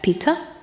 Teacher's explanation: they have obviously the glottal stop in Peter